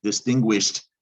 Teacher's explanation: actually you don't hear d do you you hear a t it's one of the three rules about adding e d sometimes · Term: t sound